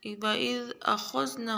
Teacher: وَإِذْ أَخَذْنَا خا کو موٹا پڑھیں گے